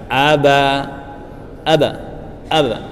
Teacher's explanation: agar qalqalah menjadi sempurna dan terdengar bagus, tipis dan mengarah ke vokal sebelumnya, yaitu fathah